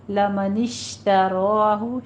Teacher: شین پہ تفشی کی آواز آئے گی اور را کے اوپر فتحہ قائمہ ہے، را مفخم پڑھی جائے گی۔